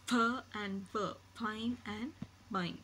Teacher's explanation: So for bilabial you have both the lips, whereas in labiodental you have the lip and the teeth.